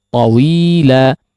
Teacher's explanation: mad iwad di sini ya, tawila, hanya memiliki kadar 2 harakat saja, tidak lebih daripada 2 harakat